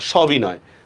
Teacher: স বা সম উপসর্গের ক্ষেত্রে অধ্বনিটা বিবৃত হবে